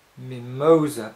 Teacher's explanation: for example in the word mimoa you probably automatically say Mimosa putting the stress on the mo